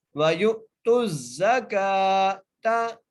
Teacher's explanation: کاف کو ایک الف کی مقدار کھینچ کے پڑھنا ہے